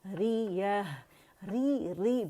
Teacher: ری باریک ہے تو اس کی آواز 1 کاؤنٹ کے لیے نیچے جائے گی, اور اس کی آواز پہلے نیچے لے کے جائیں گے اور پھر یا پہ جائیں گے.